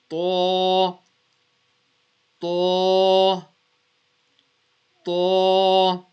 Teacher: Now how we pronounce the ta, the two letters, the ta, alif, ba, ta, and the ta are read from the same place, from the tip of the tongue touching the teeth · because this is Musta'liya letter, we're going to read this with a full mouth.